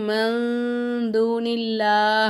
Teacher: நூனே சாக்கின நம்ம வந்து மூக்கால மறைச்சு குன்னா செஞ்சு ஓதணும்